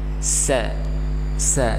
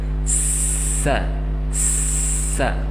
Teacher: Ketika kita ucapkan terus sa, maka akan mengalir terus-menerus udaranya. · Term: al-hamz